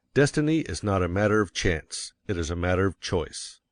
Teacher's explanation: you will want to emphasize destiny, for it is the principal idea in your declaration. And you will put some emphasis on not, else your hearers may think you are affirming that destiny is a matter of chance.